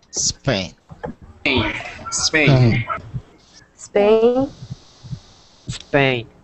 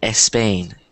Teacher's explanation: good good Okay the reason I did that was because sometimes speakers usually that are Spanish are that um are Hispanic that speak Spanish will pronounce words that start with s they'll add an e in front of it so when they say it it sounds like espain but you